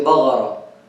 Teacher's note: We have some people in Syria, in some places, like in Deir Zor and Raqqa and those places, they make the Qaf into ghain. · They say, for example, ma aghdir. They change the Qaf into gha.